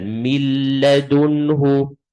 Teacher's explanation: I'm not going to be reading the letter with sukoon. I'm going to connect the letter straight away to the letter with the shadda. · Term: idgham